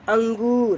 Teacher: अनुस्वर जो कि बोलते समय में ये सिर्फ नाक से ही आवाज़ें आती है